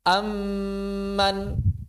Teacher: Mim pertamanya enggak ada. Hilang mim pertamanya berarti tidak eksis. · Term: idgham